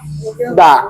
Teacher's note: Ujung lidah. Ujung lidah dengan gusi gigi yang atas